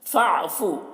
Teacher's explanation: الف کو نہیں پڑھا جائے گا، فا کو عین کے ساتھ ملا کر۔ فَاعْفُ عَنْهُمْ، نون میں اظہار ہو رہا ہے، میم میں اظہار شفوی ہو رہا ہے۔